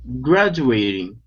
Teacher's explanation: Here we have the word graduating. The stress is at the very beginning.